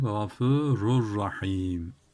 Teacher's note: Tenvinden sonra ra geldi. İdgam bila gunne yaptık.